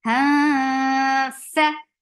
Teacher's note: You circle your lips and make it 2 count long. Ha ikhfa for fa. So keeping the sound in your nose.